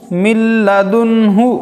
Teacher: نون ساکن کے بعد حروف یرملون میں سے لام آنے کی وجہ سے غنہ کے بغیر پڑھیں گے